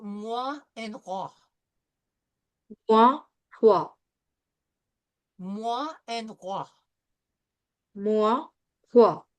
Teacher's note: now we're going to look at the combination of OI, and it is pronounced in French, wa.